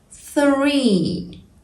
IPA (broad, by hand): θriː